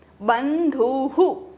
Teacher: विसर्ग के पहले उ होने से विसर्ग को भी उ का साउंड मिल जाता है. So we will call it हु.